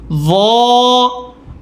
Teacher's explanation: জিহ্বার আগা দুই দাঁতের আগার সাথে